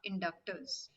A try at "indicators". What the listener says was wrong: Indicators. Indicators. Indicate. Indication we say, right? Indication. So it's called indicators. Induction is a different word. Indicator.